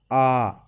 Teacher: विवर्त स्वर, मुख का सबसे ज्यादा खुलना